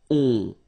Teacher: Okay, and then this O-N, so it's a nasal and it goes in your nose and it goes like on, all right? So you don't hear any N, so it's really on